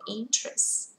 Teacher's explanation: Interest, từ này rơi vào thứ nhất trọng âm. Chúng ta không đọc là interest mà đọc là interest.